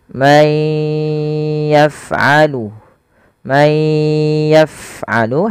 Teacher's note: Kemudian pfal may yaf'alu tahan suaranya ke yang pertama langkahnya adalah masukkan suara nunnya kepada huruf ya dan ditahan